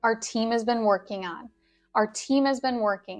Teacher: we don't need to drop the G completely, working on, but we do elide the sounds. Just, it's a little bit softer than working on.